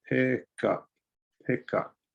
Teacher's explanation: since up starts with a vowel you can connect it to the consonant before it therefore you connect it to the k